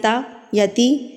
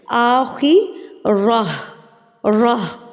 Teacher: جب ہم گول تا پہ رکیں گے نا تو یہ گول تا بدل کے گول ہاں میں تبدیل ہو جائے گی، جس کو عربی میں ہائے ساکنہ بولتے ہیں، یعنی کہ ہاں ساکن، ٹھیک ہے۔